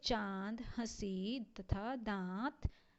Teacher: अनुनासिक ध्वनि के उच्चारण के लिए मुंह और नाक दोनों का प्रयोग हम एक साथ करते हैं।